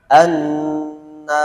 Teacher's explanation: Yang pertama tipis karena dia tidak didahului oleh apa-apa, a. Yang kedua tipis, nun setelahnya alif.